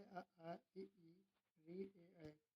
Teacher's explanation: जिन स्वरों का उच्चारण करते समय होठ गोल नहीं होते उसे अवृत्ताकार स्वर कहते हैं